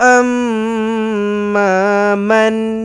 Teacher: Wa amma man nun matikan dengan jelas dan terang, izhar halki.